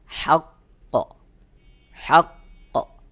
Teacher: কফের মাখরাজে যেয়ে আওয়াজটাকে একটু চেপে ধরে একটু দীর্ঘ করে পরে জবরের মত হালকা আওয়াজ করে দিতে হবে · আপনি যখন তেলাওয়াত করবেন, তেলাওয়াত করতে করতে অনেক সময় দেখবেন কোনো হরফে আপনার থেমে যেতে হচ্ছে, বা ওই হরফ কলকলার হরফ আর ওই হরফে কিন্তু তাসদিদ রয়েছে, তখন সহি উচ্চারণ হলো হাক্ক, হাক্ক। কফের মাখরাজে যে আওয়াজটাকে একটু চেপে ধরে একটু দীর্ঘ করে পরে জবরের মতো হালকা আওয়াজ করে দিতে হবে